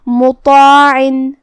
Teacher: ہم یہاں طا کو اور مد الف کو دونوں کو بھاری آواز میں ادا کریں گے · طا کی ادائیگی زبان کی نوک اور اوپر کے دانتوں کی جڑ سے ہے. طا حروف تفخیم میں سے بھی ہے تو ہمیں اسے بھاری آواز میں منہ پھلا کے ادا کرنا ہے.